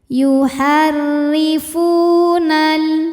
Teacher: Karena ada wau sukun didahului baris dah maka huruf fa panjang dua harakat. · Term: mad thobi